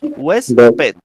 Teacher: Recae el acento en la penúltima sílaba que es west